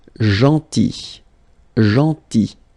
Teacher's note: this final L is not pronounced